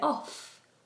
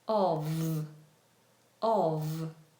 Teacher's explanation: So, when we see Of, we pronounce the F as a V. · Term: V sound